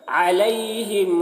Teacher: عین کو حلق سے ادا کر رہے